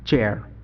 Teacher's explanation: ট সাউন্ড এবং স সাউন্ড যখন একসাথে মিক্স হয়ে যাবে তখন এর উচ্চারণ হবে চ এর মতো